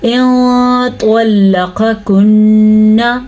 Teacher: ان طلقكن، توا کو ہم نے پر پڑھا کیونکہ توا حروف مستعلیہ میں سے ہے. لام کو ہم نے باریک پڑھا کیونکہ لام ہر حال میں باریک پڑھا جاتا ہے سوائے اللہ کے نام کے